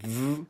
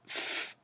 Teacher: When you put your fingers in your ears and you make the contrast between f and v sound, you will immediately see that v vibrates, but f doesn't